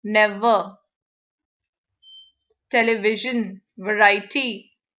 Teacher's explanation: The V is a labiodental sound. Your lips and teeth work together.